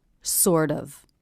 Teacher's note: I made a flap T out of the T in sort of. This is because it comes after an R before a vowel sound. Sort of. We'll want to link the D to the next word which begins with a vowel, sort of, so it sounds more like one word than two separate units.